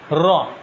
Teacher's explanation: জিহ্বাটা একটা কম্পন অনুভব হয়, র, দেখো র জিহ্বাটা কিন্তু কাঁপে